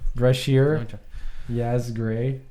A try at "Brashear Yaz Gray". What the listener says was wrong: Brashear Yaz. Brashear. You see, you say Yaz Gray like it's one word. So that means that's how he's known for. So it's Brashear. Then you gotta go quotes Yaz and then Gray.